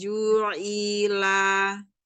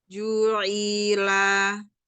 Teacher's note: Bukan i-nya yang di dalam, tapi ainnya yang di tengah tenggorokan.